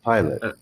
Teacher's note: make the sound of schwa it's a very fast sound so in the word pilot we move from the l to the t really quick and we just put a little uh in there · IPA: [ə]